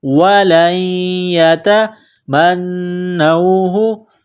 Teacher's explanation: نون مشدد ہے، غنہ کریں گے، آواز ناک میں چھپائیں گے